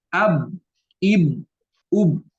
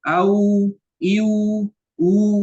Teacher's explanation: Kalau ba mah ab, ib, ub, suaranya dengan ditahan. Kalau waw mah dengan mengalirkan suara. Au, iu, u, itu kan beda. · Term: menahan suara